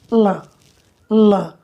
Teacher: जहाँ जिह्वा संपर्क कर रही है ताल को, उसके बगल से, पास से वायु निकल जाता है। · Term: पार्श्विक व्यंजन